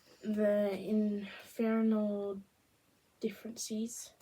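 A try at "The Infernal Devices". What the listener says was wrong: That doesn't say differences. That's a V sound.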